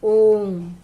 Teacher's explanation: इन स्वरों के उच्चारण करने में हमें हर स्वर से लगभग 3 गुना अधिक समय लगता है, उन्हें हम पलुत स्वर कहते हैं।